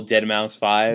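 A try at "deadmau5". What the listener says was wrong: Mouse, not Dead Mouse 5. No, it's just Dead Mouse. The 5 is supposed to be an S.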